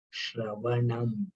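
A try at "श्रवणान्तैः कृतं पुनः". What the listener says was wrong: Nakara. Anuswara is nakara. Shravanantah Krutam Punaha. Tai. Tai after tai is visarga. So we cannot simply say tai krutam. Tai.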